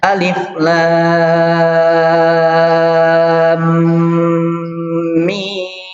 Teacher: Mim lam di sini agak lama ya, berharkat, dan itu harus masuk ke hidung, artinya itu dari khawisum atau gunnah itu ya. · Di situ jangan terlalu cepat ya, karena di situ ada mim ketemu dengan mim, masuknya idgham mislain, dan itu kita harus baca dengan gunnah